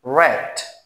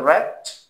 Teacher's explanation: যদি আর সাউন্ডটা শব্দ শুরুতে থাকে তাহলে ব্রিটিশরাও আর উচ্চারণ করবে, আমেরিকানরাও আর উচ্চারণ করবে